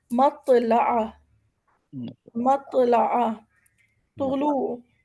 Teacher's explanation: اسی طرح طا کی آواز موٹی ہے، ہم اسے طا یا تو کر کے نہیں پڑھنا ہے، گول نہیں کرنا منہ کو، منہ ہمارا سیدھا رہے گا. طا بالکل ایک موٹی آواز نکلے گی لیکن کھڑی آواز نکلے گی